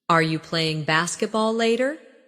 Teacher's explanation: In fast speech, are you can sound like are ya